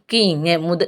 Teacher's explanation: க்கு ங்கு நாவின் முதற்பகுதி அன்னத்தின் அடிப்பகுதி